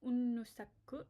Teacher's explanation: Notice that there's a double N, so we hold on to that a little bit.